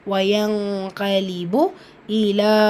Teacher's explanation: வயங்கலிபு இலா, இங்கே மத் இருக்குது, மத்தை தொடர்ந்து அடுத்த வார்த்தையோட தொடக்கத்தில் ஹம்சா இருக்குது. ஸோ மத்துல் முன்ஃபசீல், 4 ஹரக்கத்தளவு நீட்டம் கொடுத்து ஓதணும்.